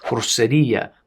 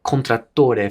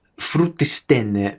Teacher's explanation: words were pronounced the Italian way with rounded vowels at the end